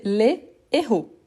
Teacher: Au pluriel, c'est les héros. Donc, on ne fait pas de liaison. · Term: H aspiré